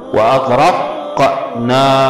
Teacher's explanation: قلقلة على القاف ومد على الألف